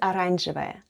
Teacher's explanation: The first letter is O, and it's unstressed and is pronounced as A. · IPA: /aranzhevaya/